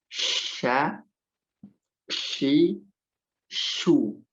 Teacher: di tengah lidah yang dinaikkan ke langit-langit